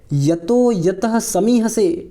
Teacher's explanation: इस विसर्ग का ओ हो गया है